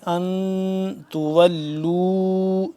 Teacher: ان نون ساکن ہے اس پہ ہم غنہ کریں گے، اخفا کریں گے